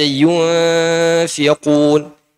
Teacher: Karena sebabnya ada nun sukun bertemu dengan huruf fa. Akhirnya terjadilah ikhfa.